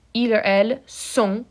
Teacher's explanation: the final T is silent, and the N is nasally